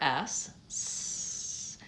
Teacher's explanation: it's an alveolar sound it's a fricative I'm making noisy air and my tongue is behind my teeth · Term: the S sound